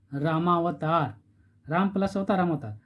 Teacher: राम का इसे म, इस शब्द का अंतिम वर्ण म में अ छिपा हुआ है, अ, और यहाँ पर अवतार अ और अ मिलकर के आ हो गया। तो क्या हो गया, अ और अ मिल करके यहाँ दीर्घ में बदल गया।